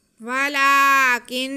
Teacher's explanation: کاف کو ہم نون سے ملائیں گے اور نون پہ غنہ کریں گے